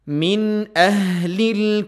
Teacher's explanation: Ha mengalir dari pangkal tenggorokan makhrajnya dan juga lamnya ditipiskan.